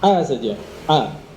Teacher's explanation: Jadi tidak boleh mengucapkan hamzah itu mengalir nafasnya.